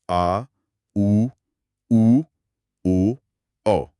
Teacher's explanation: और फिर आते हैं पश्च स्वर, जैसे आ, उ, ओ, औ। इनमें जीभ का पिछला हिस्सा सक्रिय होता है।